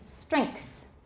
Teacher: if you put the k in there your pronunciation will be right